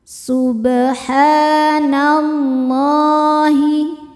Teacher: tafhim karena sebelumnya baris fathah. Cara bacanya ditebalkan.